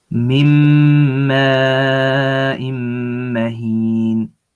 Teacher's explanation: There's a noon without anything on it, so it's a noon sakina, and it's followed by a meme, which is a layer of idgham with ghunna, and so we skip the tongue sound of the noon, the na, and we keep the ghunna for 2 counts